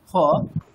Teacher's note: দেখুন ফ ফ শুনতে পার্থক্য আছে আমরা নিজেরা উচ্চারণ করে দেখুন একেবারে দুটো ওষ্ঠ এক জায়গায় করলে ফ স্পষ্ট ফ শোনা যায় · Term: পূর্ণ ফকারের উচ্চারণ